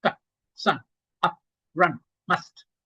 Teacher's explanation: in Indian languages, we say, ah, ah. But in English, it's, short, very short and crisp.